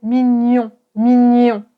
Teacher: Ce son se prononce gne gne donc c'est toujours nasal. Et tu vas prendre ta langue et tu vas la coller à ton palais.